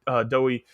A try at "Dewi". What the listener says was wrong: You said Dowie. Like cookie dough.